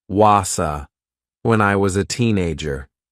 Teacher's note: the consonant sound z joins to the vowel sound so the two words sound like one